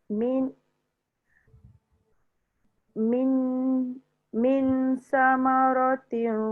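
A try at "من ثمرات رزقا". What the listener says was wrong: Bagi lama sikit. Min bagi dia dengung tu 2 harakat. Min samaratir.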